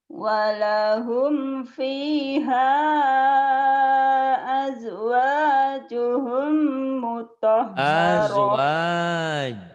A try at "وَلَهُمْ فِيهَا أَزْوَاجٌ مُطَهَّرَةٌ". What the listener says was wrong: Bukan azwajuhum, nggak ada humnya.